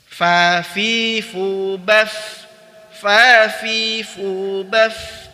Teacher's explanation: Ada 5 sifat huruf fa, yaitu al-hams, udara dialirkan, ar-rakhawah, suara juga dialirkan, apalagi ketika sukun. Kemudian al-istifal, al-infitah berarti dia huruf tipis.